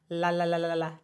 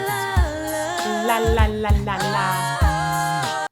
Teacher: It's like just at that tip of the alveolar ridge, right behind the front teeth. It's flicky, a flicky L.